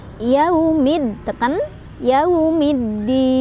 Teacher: Cara bacanya alif lamnya tidak dibaca, melainkan kita bacanya langsung ke dalnya ya. Diidghamkan langsung ke dalnya, makanya disebutnya dengan idgham syamsiyah ya.